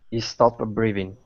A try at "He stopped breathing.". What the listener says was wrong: Yeah, but you're adding one of those little Italian vowels. Because you're saying stop breathing. Like it's a pizza. You have to get rid of that extra vowel.